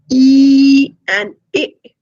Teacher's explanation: in sounds like e it's the front of the tongue that is being raised